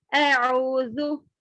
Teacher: हमजा अलग, आइन अलग है, तो इसको अलग अलग पढ़ेंगे